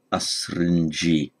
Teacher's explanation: astridges is a neutral word and so the the nominated plural just ends in an e but with a nasal before the final consonant